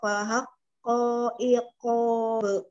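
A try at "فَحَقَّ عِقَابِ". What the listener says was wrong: Iqob. Panjangin, Umi. Fahakko iqob.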